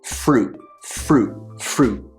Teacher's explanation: The T sound gets cut off, and what I end up doing is putting my tongue on the roof of my mouth to cut that sound off. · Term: cutoff sound